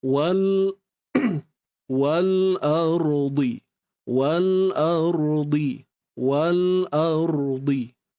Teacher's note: ra ni kena angkat pangkal lidah untuk dapatkan sifat tebal